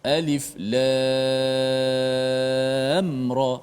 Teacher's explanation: Mim tu dimatikan dan terus masuk ra. Jangan alif lam ra, jangan lambat. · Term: izhar syafawi